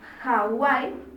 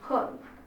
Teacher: Pero si hablamos de una H aspirada, como la palabra Hawái, se escucha como un sonido de J.